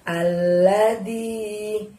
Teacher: Pada saat mengucapkan di, panjangnya 2 ya.